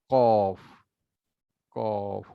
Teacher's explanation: জিহ্বার গোড়া উপরে তালুতে লাগালে